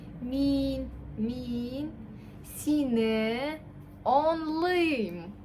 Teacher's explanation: У нас ударение на последний слог, и мы тянем гласный.